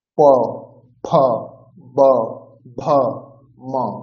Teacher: দুটি ঠোঁট পরস্পরকে স্পর্শ করবে। উচ্চারণ করার সময় ওপরের ঠোঁট এবং নিচের ঠোঁট পরস্পরকে স্পর্শ করবে, তাহলেই এই বর্ণগুলি উচ্চারণ ঠিকঠাক ভাবে হবে।